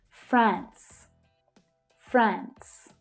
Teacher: Notice that it is an unvoiced /s/ consonant sound at the end there.